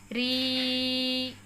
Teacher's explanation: ऋषि के री को हम अगर लगातार बोलें बिना रुके तो अंत में हमें ई प्राप्त होता है। जैसे री, अंत में हमें ई प्राप्त हो रहे हैं।